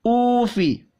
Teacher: अब ये वाव मद्दा है, ऊ 1 अलिफ के बराबर खींच कर पढ़ेंगे।